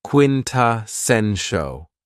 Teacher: this word has four syllables and the stress is on the third syllable